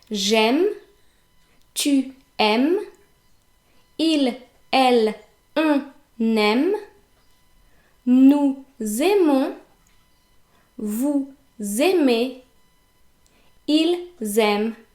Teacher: Notice that E, ES and ENT are actually silent. and that EZ is pronounced like E.